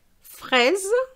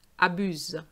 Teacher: Fraise, and I say, I actually pronounce the S, it's like a Z, it's a Z sound between two vowels